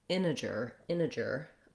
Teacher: when we have words that have an nt in the middle like integral integer internet we often as americans leave that t out so another option is to say it more like integer integer